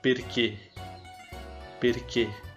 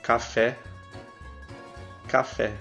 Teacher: Letra E, perché, perché, quando tem o acento agudo, som fechado. Café, café, aqui a gente pronuncia igual porque tem um acento grave na letra E, então vai ter o som aberto.